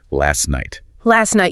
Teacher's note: That T at the end of last night often vanishes entirely in rapid speech. We just say last night. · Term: elision